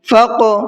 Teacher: قاف بھی حروف قلقلہ میں سے ہے اور اس پر جزم بھی ہے تو قلقلہ کر کے پڑھیں گے